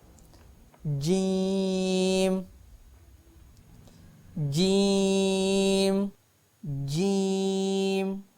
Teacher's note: زبان کے درمیانی حصہ سے جیم ادا ہوتا ہے۔ جیم، جیسا کہ ایرر آپ کو نظر آ رہا ہے، زبان کا درمیان والا حصہ اوپر لگے تو جیم ادا ہوتا ہے۔